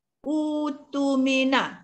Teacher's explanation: Bagi dibaca dengan utumina, kena baca secara ibdal, iaitu ditukar kepada waw yang mat dua harakat. Jadi utumina, hamzah yang atas waw tu jadi utu dua harakat.